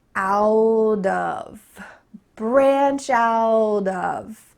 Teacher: We're emphasizing branch out, but something is happening here at the end of the word out. The next word starts with an O, so our T is going to change to a D.